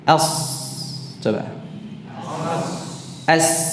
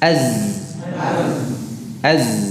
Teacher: kalau sini disertai dengan aliran nafas kalau Zai dengan menahan nafas